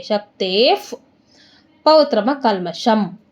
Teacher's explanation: ವಿಸರ್ಗದ ಮುಂದೆ ನಮಗೆ ಪೌ ಇದೆ, ಅದರಿಂದ ಅದೇನಾಗುತ್ತೆ ವಿಸರ್ಗ ಆಟೋಮೆಟಿಕ್ಕಾಗಿ ಅರ್ಧ ಪ ಆಗುತ್ತೆ